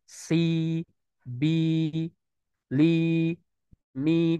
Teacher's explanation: huruf Sin yang kasr tadi dibaca Dua harakat